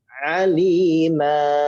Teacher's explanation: diganti fathah dengan panjang mad 2 harokat. Aliman dibaca alima, gitu ya.